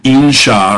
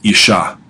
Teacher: N's often get assimilated with a strong consonant that follows them in Hebrew. So instead of insha or something like that, you get isha, two shins in a row.